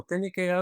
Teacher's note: the K sound is like a K and a G at the same time. Some people when they say it, they're saying more like gya.